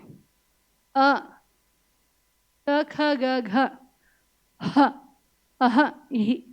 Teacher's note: ಅ ಕುಹ ವಿಸರ್ಜನೀಯಹ ಎಲ್ಲಿ ಹುಟ್ಟುತ್ತೆ ಕಂಠದಲ್ಲಿ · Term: ಕಂಠ್ಯಹ